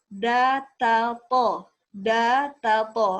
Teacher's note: ujung lidah menyentuh gusi gigi seri atas